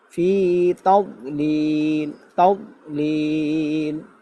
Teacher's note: অনেকে তাদ কলকলা করবে, কলকলা না, ফি তাওলিল